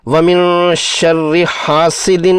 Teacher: را مشددہ مکسورہ کو ترقیق سے یعنی باریک پڑھنا ہے